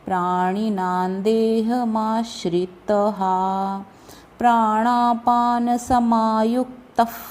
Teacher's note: अब ये त के बाद जो विसर्ग है उसका अगला वर्ण प है, इसलिए उसका उच्चारण फ, एकदम फ नहीं आएगा, क्लियर फ नहीं आएगा, फ जैसा उच्चारण आएगा।